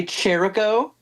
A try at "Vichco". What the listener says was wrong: I I can excuse the the the lack of Ringling, but not the the ch being pronounced like a C.